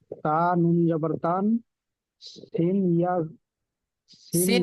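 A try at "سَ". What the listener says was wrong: সিন ইয়া বলতে হবে না, সিন খাড়া জবর সা।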